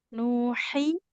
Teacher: H-nya di tengah tenggorokan